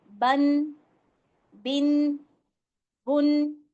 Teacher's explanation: اینڈ میں آپ کی ساؤنڈ نون کی آئے گی، نون وہاں پہ جا کے نا باریک سا ادا ہوتا ہے، نظر نہیں آئے گا، لیکن کیا ہوگا یہ چھپا ہوا ہے، تو اس کو ادائیگی کے آخر میں کیا ہوگا، آواز جو ہوگا نون ساکن کی طرح ہوتی ہے، اور ان دونوں کے قواعد بالکل ایک جیسے ہوں گے، نون ساکن کے بھی اور تنوین کے بھی۔